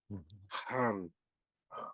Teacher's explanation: It's almost like saying the H is coming from the back of your throat, um, way deep. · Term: raspy H sound